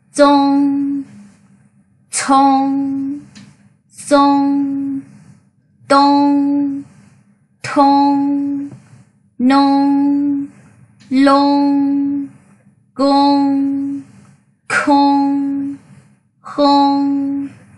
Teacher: chúng ta sẽ không đọc giống ung ở trong tiếng Việt, mà chúng ta hơi mở miệng ra một chút và để miệng hơi hóp vào nha. Đọc là ôm, mở miệng và hóp miệng.